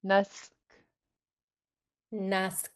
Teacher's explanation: And then three, you have a pinched S right before the K. So you're going to make the S really sharp sounding, but then relax on the K.